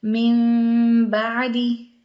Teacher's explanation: نون بالکل ادا نہیں ہوگا، وہ میم میں بدل جائے گا اور ہونٹ پورے بند نہیں ہوں گے